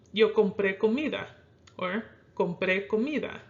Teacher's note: The compré, you're accenting more on the pre part.